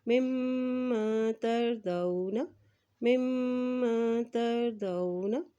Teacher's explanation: میم کے اوپر شد ہے تو یہاں پہ غنہ ادا کرتے ہوئے پڑھیں گے